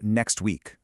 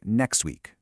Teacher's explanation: Pronunciation A was next week, with a really clear, sharp T sound. But pronunciation B was more like next week, where that T just, poof, vanished.